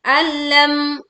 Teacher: kita baca dengan jelas mim sukun nya ya tanpa memantulkan suaranya